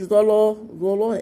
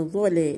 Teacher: لا مرققة ظا مفخمة